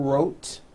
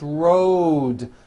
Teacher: a voiced D Road also has a voiced D ending Road it's not wrote unvoiced it's rode the whole word is voiced